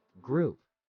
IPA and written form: ɡruːp (group)